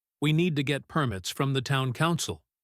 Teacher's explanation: the words need, permits, town, and council are longer, louder, and higher in pitch. The words we, to, get, from, and, and, the are very short and quiet. · The words we, to, get, from, and, and, the are very short and quiet. They almost disappear. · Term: stressed words